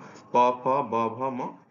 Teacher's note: ঠোঁটের দুই ঠোঁটের মাঝখান দিয়ে যে শব্দটা উৎপন্ন হয় সেগুলো হচ্ছে ওষ্ঠবর্ণ।